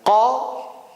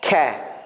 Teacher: Kaf is like a light qa. Qa is like a little bit from throat. Ka is from like your 2 sides.